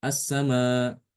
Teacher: Jadi hamzahnya dibaca dihilangkan. seakan-akan tidak ada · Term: menghilangkan hamzah